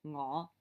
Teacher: It's a low rising tone